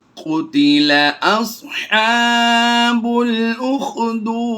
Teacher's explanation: हुरूफ़ मद्दा के बाद यानी वाव मद्दा के बाद यहाँ पर सुकून आर्जी है तो मद्दे आरिज़ करते हुए ज़्यादा लंबा करेंगे।